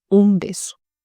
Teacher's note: Avant BUP, le N se prononce comme un M.